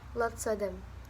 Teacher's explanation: kehilangan akhir v dalam of sebelum konsonan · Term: loss of final v